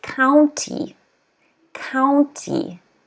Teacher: Stress is on the first syllable, county. But don't forget to pronounce the Y.